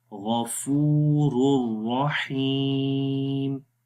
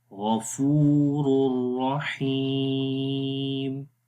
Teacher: اور آخری مثال را کی، تنوین کے بعد جب را آ گیا تو اس وقت یہاں پر لکھنے میں ایسے آئے گا، غفور الرحیم. رور بغیر غنے کے ادغام ہو رہا ہے، غفور الرحیم.